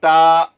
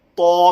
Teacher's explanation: تا زبان نیچے ہی ہے، جب میں تو کروں گا تو زبان پیچھے کی اوپر اٹھ جائے گی